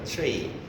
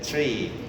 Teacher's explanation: The lips are totally spread, yeah? It's almost like smiling, yeah? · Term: spreading